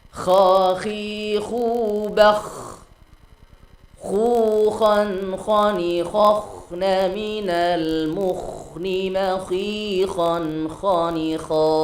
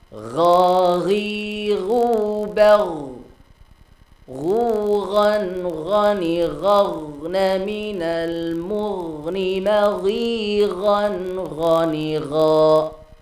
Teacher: Dua huruf ini juga memiliki sifat yang sama, yaitu rakhawah, mengalir. Maka tidak diperbolehkan untuk memantul.